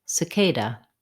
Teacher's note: The word cicada has second syllable stress.